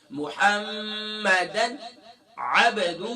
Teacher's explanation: تنوین کے بعد عین آ گیا تو یہاں پر اظہار ہوگا، یعنی کہ غنہ نہیں کریں